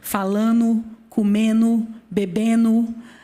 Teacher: essa queda do fonema D, isso é um sotaque das línguas africanas que não palatalizavam esse fonema